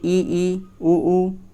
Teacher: जिन स्वरों के उच्चारण में मुख द्वार लगभग बंद रहता है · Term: संवृत